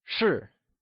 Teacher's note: sure is pronounced using a falling tone or the fourth tone